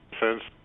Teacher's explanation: Sense and you might I hope that you can hear that it sounds like there's a little extra T sound inserted towards the end of it